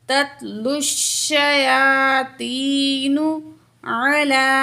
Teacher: یا ساکن ہے، ما قبل زیر ہے، یا مد ہے، دو الف کے برابر کھینچ کے پڑھیں گے · لام کے اوپر کھڑا زبر ہے، ایک الف کے برابر کھینچیں گے